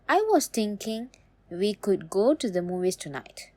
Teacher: with a level or rising tone, it tells the listener that more is coming, like you're still building your point.